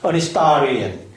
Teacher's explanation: 그래서 여기 액센트가 이동을 하고 뒤쪽으로 이동을 하니까 H 발음이 매우 약화되고, 약화된 이 발음은 거의 묵음이 돼서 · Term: 세미사일런트